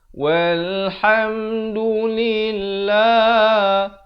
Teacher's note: Lafz jalalah ini dibaca nipis 2 harakat.